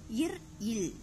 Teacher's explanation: ஆகிய இரு மெமெய்களும் மேல்வாய் மேல்வாயை நாக்கின் நுனி வருடுவதால் பிறக்கின்றன